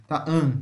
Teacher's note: mais Central veja como se tivesse indo para a parte central o som é aberto mas é Central